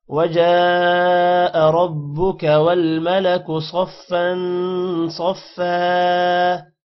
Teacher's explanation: صاد موٹا ہوگا اور فا پر دو زبر ہے جس کی وجہ سے غنہ ہوگا. صفا، اگین صاد موٹا ہوگا اور وقف کی وجہ سے دو زبر ایک زبر میں کنورٹ ہو جائے گا اور الف تھوڑا سا لمبا ہوگا.